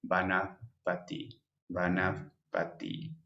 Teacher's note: como comido ahí cambia parís cambia hariri cambia y elvis arg antes de p tiene un leve leve sonido a efe · un suave sonido labio dental donde levemente los dientes superiores intentan ir hacia los labios inferiores como cuando pronunciamos fa pero muy muy suavemente entonces por ejemplo